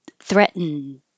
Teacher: Threatened, you won't hear the T in the middle at all. Your tongue goes to the T position, threat, and then you hold it there.